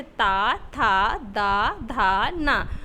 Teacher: जो वायु होगी वह दांतों को टच करेगी, तो इनका उच्चारण स्थान हो जाता है दंत